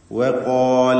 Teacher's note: ഇസ്തിഅലാന്റെ ഹർഫാണ് ഖാഫ്. അതിനെ ദീർഘിപ്പിക്കുന്നു അലിഫ് കൊണ്ട്. അലിഫിലും തഫ്ഖീം നിലനിൽക്കണം.